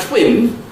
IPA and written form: tʷwɪn (twin)